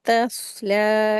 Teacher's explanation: स्वाद को जो है हैवी करके पढ़ेंगे। तस्ला, लाम को हैवी नहीं करेंगे, लाम को बारीक करेंगे, 2 हरकत इसको खींच के पढ़ेंगे।